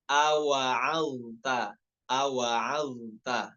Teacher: ainnya dibaca tipis dan juga huruf taknya jangan sampai terbawa tebal, jangan sampai awa'alto, awa'alto, bukan, tapi awa'alta, awa'alta ya, karena sebelumnya ada huruf dha yang memiliki sifat isti'la ya.